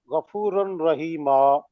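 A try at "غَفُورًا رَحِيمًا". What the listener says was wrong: गफूर रहीमा, रन रहीमा नहीं।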